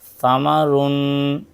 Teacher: سا کی آواز باریک اور نرم ہوتی ہے، جیسے ثمرن۔